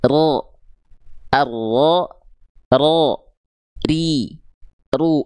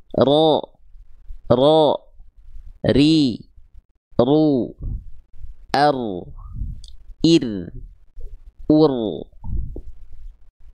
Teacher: Getarannya adalah getaran yang tidak berlebihan. Ya, getaran yang tidak terlampau berlebihan. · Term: takrir